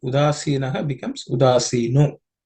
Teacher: with the Visarga at the end has become O